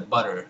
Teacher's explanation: At the end, you have a schwa and an R, American R, of course, and they're kind of pronounced together, butter. Finally, you can see this transcribed as this, looks like a three, or like a backwards symbol for the pet, vowel. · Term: R-collared schwa